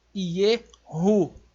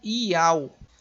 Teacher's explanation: Isso aqui, ele não é mudo, não é uma consoante muda aí não. Ela tem um som do H do hebraico, é uma gutural